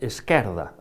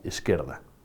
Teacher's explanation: A palabra esquerda, na miña familia, é fechada, mas na miña infancia o que prevalecía era o castellanismo izquierda, de maneira que, ao regaleguizar a palabra na miña xuventude, en vez de voltar á pronuncia tradicional, pasei a dicer esquerda, aberto. Só o portugués me permitiu ser consciente diso e recuperar a pronuncia tradicional, esquerda.